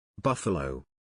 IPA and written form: ˈbʌf.ə.ləʊ (Buffalo)